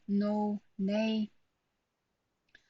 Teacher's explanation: you put the tongue to the alveolar ridge and similar placement of l you make a sound